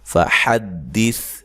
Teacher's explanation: सा को बारीक पढ़ना है, हिलाना नहीं है, तो हा को वाज़े निकालना है।